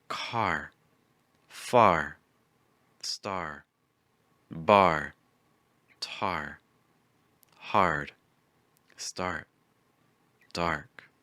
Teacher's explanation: before they parted our next sound is R like in car start with a wider ah sound before closing your mouth into the r position